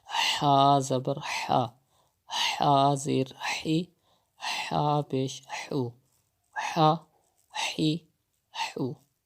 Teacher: You have to pronounce it from the middle part of your throat, not the bottom part of your throat.